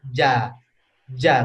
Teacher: kalau ja itu nempel ke atas ya jadi ditolak Pak lidahnya ditolak dari langitnya ke bawah ke posisi istirahat ja ja ke posisi normal Ja Kalau Sya